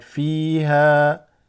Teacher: Fi is slightly extended because of the ya.